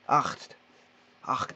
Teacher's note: Alors, je rappelle qu'il faut HCHT. Le T, on doit l'entendre, et ACH, c'est un espèce de R roulé du fond de la gorge.